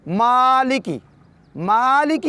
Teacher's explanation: مالکی کی میم کو 2 حرکات کے برابر کھینچیں گے بخاطرین، اس لیے کہ یہاں پر الف مدی ہے۔